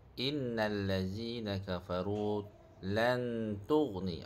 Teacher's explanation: Nun mati berjumpa dengan huruf ta. Hukumnya adalah ikhfa hakiki. Dengu dalam kadar dua harakat. Ikhfa yang ringan.